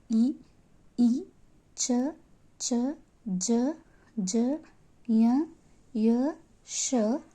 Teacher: ಇವೆಲ್ಲ ಅಕ್ಷರಗಳು ಕಂಠದಿಂದ ಉಚ್ಚರಿಸಲ್ಪಡಂತವುಗಳಿಗೆ ಕಂಠಕ್ಷರಗಳು ತಾಲವ್ಯಗಳು ತಾಲವ್ಯಗಳು ಇವು ತಾಲು ಅಂದರೆ ದವಡೆ ತಾಲು ಅಂದರೆ ದವಡೆ ದವಡೆ ಸಹಾಯದಿಂದ ಉಚ್ಚರಿಸಲ್ಪಡುವಂತ ಅಕ್ಷರಗಳು